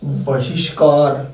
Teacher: ई के बाद विसर्ग है, तो ये विसर्ग बदल जाएगा दोस्तों श में।